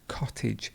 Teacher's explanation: notice here how the a becomes an i sound